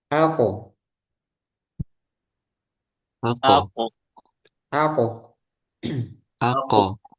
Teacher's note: pangkal lidah menyentuh dengan ee langit-langit bagian yang lunak · Nah, qalqalah. Karena qof ini tebal jadi qalqalahnya juga tebal.